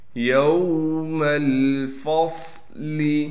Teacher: یوم الفصل، میم کو لام سے ملائیں گے، پھر فا کو صاد سے ملانا ہے، صاد کو موٹا کر کے پڑھیں گے اور صاد میں سی ٹی بھی نکالیں گے